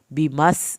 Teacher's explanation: सीन को हमने सीटी के आवाज़ के साथ पढ़ा